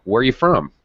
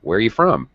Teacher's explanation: you can barely hear are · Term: really reduced